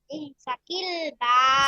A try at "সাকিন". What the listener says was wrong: সাকিল বারবার কেন বলছেন? সাকিন বলে দিচ্ছি। সাকিল না বলেন সাকিন, সাকিন সাকিন 100 বার বলেন তো সাকিন।